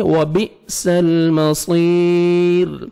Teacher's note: حمزہ کو مجزم ہے, جھٹکے سے پڑھیں گے · صاد کو موٹا کر کے پڑھنا ہے اور 1 سیکنڈ آپ نے کھینچنا ہے. یا مدہ ہے, لاسٹ میں را سٹاپ کریں گے, ساکن ہو جائے گا.